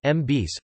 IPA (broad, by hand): mɑˈbɑs(s)